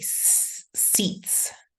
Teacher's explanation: Since this T is voiceless, then I'm going to use the voiceless sound S.